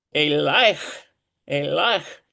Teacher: When you have that patak yod combination, you get a diphthong.